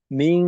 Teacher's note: নাস মাদ্দা আরজি তো, আর গুন্না, এই যে এখানে প্রথমে ইকফা গুন্না আয়াতের শুরুতে একেবারে, তো ইকফা গুন্নাকেও এক আলিফের থেকে বেশি করে, দুই আলিফের কাছাকাছি।